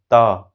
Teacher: त को रोकने के लिए किसका प्रयोग किए हैं, त, दांत का और जीभ का